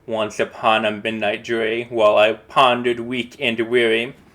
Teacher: So in trachaic meter we have a strong syllable uh a syllable that that's accented followed by an unacented or weak syllable and that's the pattern that repeats. So it's strong weak strong weak strong weak